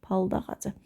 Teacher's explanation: Saitlə başlayan söz gəldiyi üçün d olduğu kimi tələffüz olunur.